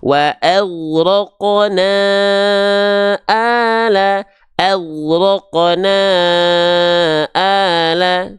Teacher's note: Panjangkan 5 harokat mad jaiz munfasil. · Kalimatnya terpisah, namanya adalah mad jaiz munfasil. Mad jaiz munfasil, panjangkan na-nya selama 5 harokat.